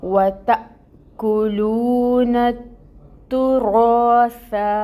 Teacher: الف ساکن اور اس سے پہلے رو پر زبر کی حرکت، الف مد، رو کو 2 کاؤنٹس لمبا، اور یہ والا جو رو ہے اس کو مفخم بھی پڑھیں گے